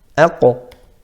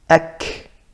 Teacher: Qaf on the right, further back, soft palate.